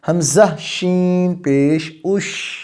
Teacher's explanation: اب سانس جاری ہے لیکن ادائیگی میں، مخرج کی ادائیگی میں کمزوری کی وجہ سے پستی آ چکی ہے